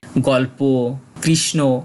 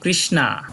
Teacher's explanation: যদি শেষে কোন যুক্তবর্ণ থাকে এবং সেই যুক্তবর্ণের সাথে যদি কোন কার চিহ্ন না থাকে তাহলে যুক্তবর্ণের শেষের বর্ণটার সাথে একটা ওর মতো সাউন্ড আসে